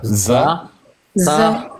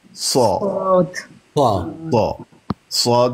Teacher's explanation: فرق یہ ہے جہاں سے آپ زا اور سین کو ادا کر رہے ہیں وہاں سے ہی آپ نے صاد کو بھی ادا کرنا ہے لیکن صاد کی ادائیگی کے وقت منہ بھر کے پڑھیں گے مفخم کر کے پڑھیں گے اور ہونٹوں کو گول کرنے کی ضرورت نہیں ہے وہ پھر واو سی بن جاتی ہے.